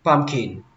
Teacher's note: Các bạn xuống giọng ở chữ kin.